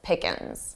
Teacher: notice how Joey from Friends also drops the G and says it very unstressed.